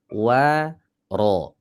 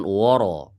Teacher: Waro, awas, wawunya tebal, wawunya harus tipis. Waro, bukan woro.